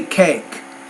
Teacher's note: the K is a voiceless consonant so the vowel should be shorter